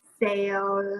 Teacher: we end the word with our tongue at the top of our mouth bending backwards getting ready to come out but we don't let it come out